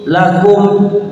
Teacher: Inni lakum, mimnya dibaca jelas bukan lakum nadhi, itu salah ya. Jadi mimnya ada kalanya mim ditahan kalau ketemu ba, ada juga mim ketemu mim itu ditahan juga, tapi khusus mim yang ini itu tidak ditahan, namanya izhar syafawi.